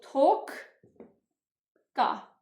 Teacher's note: Səkiz toqqa sözündə birinci q öz qarşılığına keçir.